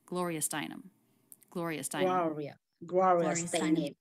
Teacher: Da da da da da Steinem. The stressed syllable of her last name would be the most stressed in the group of her name.